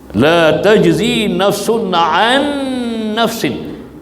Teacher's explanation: Kita ghunnah dua harakat dan kita idghamkan nun pertama kepada nun yang kedua. · Jadi di sini berlaku pertemuan dua huruf nun dengan nun, huruf yang sama makhraj dan sifat, dan nun yang kedua itu bertasydid, sifat dia kena dengung dengan qadar dua harakat. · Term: wajib al-ghunnah